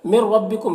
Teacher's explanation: نون ساکن کے بعد را ہے، حروف یرملون میں سے تو ادغام تام ہوگا